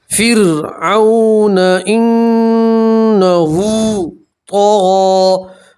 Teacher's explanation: वाव लीन है, वाव के ऊपर जज़म हो और उससे पहले वाले हर्फ के ऊपर ज़बर हो तो उसे वाव लीन कहते हैं। और वाव लीन को खींचते नहीं है, वाव लीन को जल्दी पढ़ते हैं।